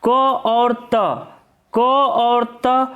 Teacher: क और त अघोष अल्प प्राण ध्वनि है।